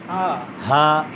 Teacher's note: 1 নম্বর মাখরাজ হলো হলকের শুরু, কণ্ঠনালীর সিনার অংশ শুরু থেকে হবে। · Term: হামজা হা